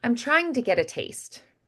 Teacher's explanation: I'd make the vowels a little bit more casual there, but I still do have the T's there. They're just slightly softened.